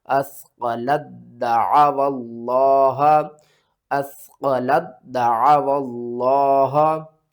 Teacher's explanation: ہم مشدد کو پڑھتے ہیں، ساکن کو چھوڑ دیتے ہیں۔ لام کو دال کے ساتھ ملانا، دال کو 2 بار پڑھنا ہے